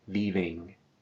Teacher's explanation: a nasal diphthong represented by those 2 final letters, EM